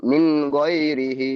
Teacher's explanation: খাড়া জেরটি হলো ইয়া মাদ্দার সমতুল্য, সুতরাং খাড়া জেরকে এক আলিফ পরিমাণ টান দিয়ে পড়তে হয়।